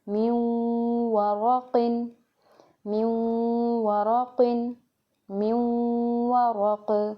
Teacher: next example دیکھیں، من ورق، यहाँ पे गुन्ना करने का तरीका क्या है, मिला के और गुन्ना करेंगे, मिलाएंगे भी सही, नाक में आवाज़ जाएगी नून की, और वाव को भी पढ़ेंगे